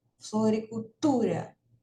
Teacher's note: a sílaba tônica, né? Ou seja, a sílaba mais forte é o tu